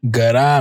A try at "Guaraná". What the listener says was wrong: Because the accent at the end.